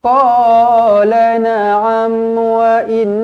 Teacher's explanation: mim mati. Matikan dengan jelas. Izhar syafawi. Wa innakum, mim mati sekali lagi, matikan dengan jelas.